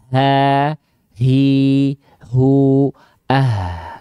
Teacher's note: Dari pangkal tenggorokan. Tepatnya pada bagian pita suara yang membuka. · ha besar dilafalkan dari aqsal halqi atau pangkal tenggorokan atau tenggorokan paling bawah